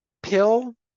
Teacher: I have a word like pill with an aspiration